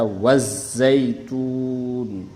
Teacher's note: Cara membaca alif lam samsiyah ini meleburkan alif lam ke dalam huruf-huruf syamsiyah.